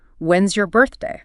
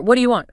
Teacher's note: For those genuine questions where you're asking for new information, the intonation usually falls at the end.